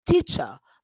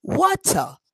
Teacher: many British at the end have the schwa